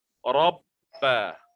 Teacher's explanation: Ada nabrah, penekanan kerana ada syaddah. Rabba. Jangan terlalu ringan.